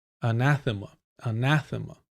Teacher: The emphasis on the second syllable.